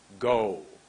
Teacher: when you say go there's a w at the end of that word